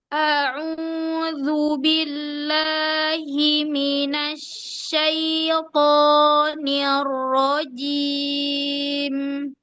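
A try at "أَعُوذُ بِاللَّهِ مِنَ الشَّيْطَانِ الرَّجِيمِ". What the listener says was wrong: Ya, hati-hati ya. Syai-nya syaito. Syai agak ditekan di ujung ya sukunnya itu. Tapi dia lin saja. Syaito. Ya, jangan ditekan.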